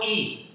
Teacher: जो ध्वनि निकल रही है जीभ के अग्रभाग से निकल रही है